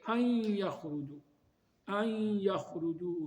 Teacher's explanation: جب اس کے بعد یا آ جائے تو پھر نون کی صرف آواز آتی ہے، نون واضح پڑھا نہیں جاتا